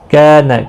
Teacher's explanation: کاف کا الف مدہ ہے، 1 الف کی مقدار کے برابر کھینچ کر پڑھیں گے